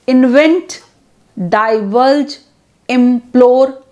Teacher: takes stress on second syllable